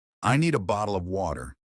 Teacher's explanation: The T that disappears. Americans love to soften or remove the T sound. Water sounds like water.